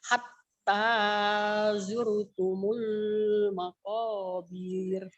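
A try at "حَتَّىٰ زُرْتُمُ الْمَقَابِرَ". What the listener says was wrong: Makobirnya pendek. Hatta zur hatta zurtumul maqabir.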